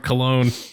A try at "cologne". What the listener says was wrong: The emphasis on the wrong syllable.